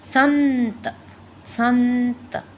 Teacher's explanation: ये होते हैं हमारे अनुस्वार वर्ण, जिसमें कि बिंदी की आवाज़ है वो नाक से थोड़ी सी झनझनाहट की तरह पैदा होती है